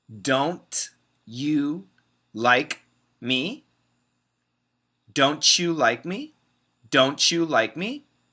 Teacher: if we have a t next to a y we can make it into a CH sound · That's a stop T sound. But many Americans combine the T and the Y to make a CH